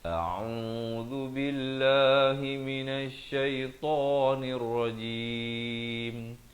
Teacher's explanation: Yang betulnya ialah yang pertama hamzah di pangkal kerongkong a, kemudian ain di pertengahan kerongkong beri dhammah 2 harakat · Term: hamzah dan ain